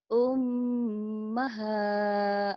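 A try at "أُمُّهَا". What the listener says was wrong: ummuha bukan ummaha. Kenapa ummaha? Ayo, lihat tandanya ummuha. Bukan, ulang.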